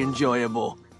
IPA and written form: ɪnˈdʒɔɪəbl (ENJOYABLE)